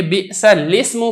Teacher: تو پھر اس کو ہم کیا پڑھیں گے، بئس الاسم پڑھیں گے. لام کو سین کے ساتھ آپ براہ راست ملا دیں گے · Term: کسرہ کی حرکت